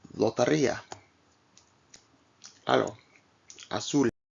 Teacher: The L is pronounced with the tip of the tongue against the alveolar ridge as in English. However, the tongue is held straight rather than slightly curled.